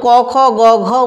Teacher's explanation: যেমন ক খ গ ঘ মা, এটাকে বলা হচ্ছে মূলত কণ্ঠধ্বনি, কেননা এই ব্যঞ্জনধ্বনিগুলি মূলত আমাদের কণ্ঠ থেকে উচ্চারিত হয়